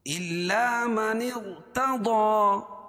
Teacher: کھڑا زبر قائم مقام الف مدہ کہ اس کو ایک الف کے برابر کھینچ کے پڑھیں گے